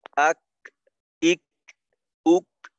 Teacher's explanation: বিষয়টা হলো কি, যে ধরেন আমি আওয়াজটা একেবারেই বন্ধ হয়ে যাবে, অর্থাৎ মনে করেন কাফের মাখরাজ। কাফের মাখরাজ হলো জিহ্বার গোড়া থেকে একটু আগে বাড়িয়ে তার বরাবর উপরের তালুর সঙ্গে লাগাইয়া। তো জিহ্বার গোড়ার একটু আগের অংশটা তালুর সাথে একেবারেই আটকে যাবে।